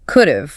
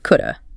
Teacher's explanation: The mouth completely drops the H in have. It takes too much breath to produce.